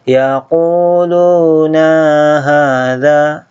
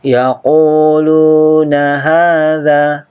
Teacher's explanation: Ingat, na jangan dipanjangkan langsung masuk ke hadza